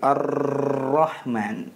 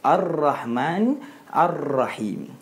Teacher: mempunyai satu sifat yang kita namakan taqrir yaitu berulang-ulang